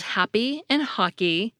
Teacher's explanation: in the words “happy” and “hockey,” we get unaspirated /p/ and /k/